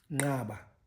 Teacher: with these nasals sort of preceding the click itself, in a sense, these are pre-nasalized, or it's a pre-nasalization process for the clicks.